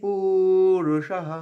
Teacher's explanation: পু দীর্ঘ করব, আবার রু হর্ষ, পুরুষঃ মূর্ধন্য স্বয়ের পরে বিসর্গটা হয়ের উচ্চারণ।